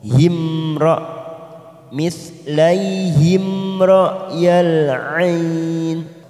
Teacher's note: mim sukun yang bertemu ro, namanya idhar safawi, kita baca jelas tanpa mendengung.